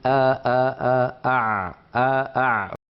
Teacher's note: فوجد بان حرف العين من اقرب الحروف الى الهمزه من حيث المخرج